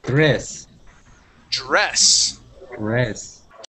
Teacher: when you pronounce a D and an R, you want to create one sound instead of saying der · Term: DR sounds